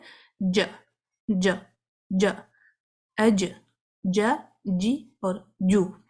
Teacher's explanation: تو سینٹر کا حصہ اوپر سخت تالوں کے ساتھ ہارڈ پیلٹ کے ساتھ ٹچ کرتا ہے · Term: جیم